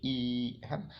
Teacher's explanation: मुख द्वार जो है लगभग पूरी तरीके से बंद रहता है और जीवा जो है ऊपर उड़ जाता है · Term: संवृत्त